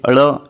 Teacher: मूर्धन्य किसे कहते हैं फ्रेंड्स, वो तालू वाले जो अल्फाज होते हैं, जैसे कि अड़, ये जो तो तालू से ज़बान की नोक तालू पर लग रही है